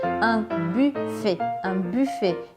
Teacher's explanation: não é buffet com I, também não é buffet com U igual em português, é aquele U com biquinho, bem do francês mesmo. Un buffet. Tem que fazer esse biquinho e imaginar que está falando um I, mas sem abrir a boca.